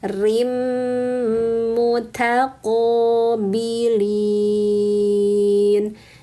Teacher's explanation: Jadi bunyinya rimmu namanya idgham bighunah.